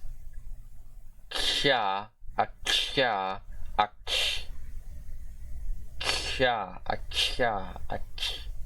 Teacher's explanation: the voiceless, palatal, non-sibilant affricate consonant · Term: palatal affricate